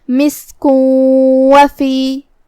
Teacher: کلمت مسک میں سین پہ جزم ہے تو ہمیں سین کو ظاہر کرنا ہے، آخر میں کاف پہ تنوین پیش ہے، اور پھر حرف الواو آتا ہے کلمت وفی میں، یہاں حکم ہے ادغام بغنہ، ہمیں یہ تنوین کو واو میں ملاتے ہوئے غنہ اور تشدید کے ساتھ یہ حکم کو ادا کرنا ہے